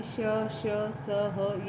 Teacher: धीरे धीरे रोककर रगड़ के साथ निकालकर इनका उच्चारण किया जाता है। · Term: ऊष्म व्यंजन